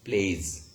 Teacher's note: Play is play. The word play also ends with a vowel sound, and vowel is actually a voiced. So that's why it actually causes s to become z.